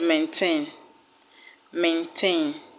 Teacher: So we are going to put our stress, or we are going to stress the word on the second syllable. The word maintain will have its stress on TAIN.